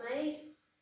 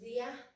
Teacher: la vocal abierta está separada de la vocal cerrada tónica, no están en la misma sílaba. Y como dice la regla de acentuación del hiato, que el una vocal abierta más una vocal cerrada tónica exigen obligatoriamente la tilde en la vocal cerrada.